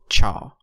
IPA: tʃ